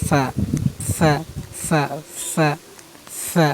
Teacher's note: না ফা ফা না, ফা ওটা না, ফা হলো সামনের যে দুই দাঁত আছে ওই দাঁত আপনার নিচের মানে নিচের যে ঠোঁটটা আছে, নিচের ঠোঁট সামনে দুই দাঁত নিচের ঠোঁটের মধ্যখান থেকে উচ্চারণ করবেন ফা। এই দেখেন আমি দেখা দিই, এই দেখেন সামনে দুই দাঁত, এই যে ঠোঁট নিচের ঠোঁট যে আছে এই নিচের ঠোঁটের মধ্যখান থেকে উচ্চারণ করবেন, মধ্যখান থেকে এই মধ্যখান থেকে উচ্চারণ করবেন ফা ফা।